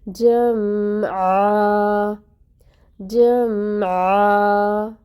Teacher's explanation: ہم میم پہ آواز کو جاری رکھیں گے